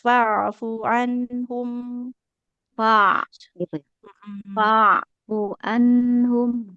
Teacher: fafu di tengah tenggorokan dengan ada sedikit aliran suara yang terjaga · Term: huruf ainnya